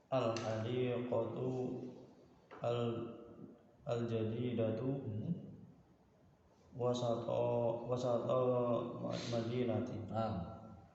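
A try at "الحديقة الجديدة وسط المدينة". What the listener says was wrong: Mumtaz.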